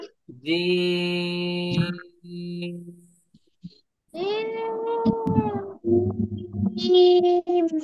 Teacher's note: জিহ্বার মাঝখান, তার বরাবর উপরে তালুর সঙ্গে লাগবে এবং মোটা আওয়াজে পড়তে হবে।